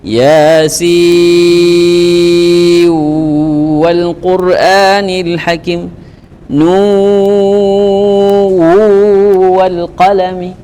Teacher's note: Harus kasih mat dulu baru masuk idgham.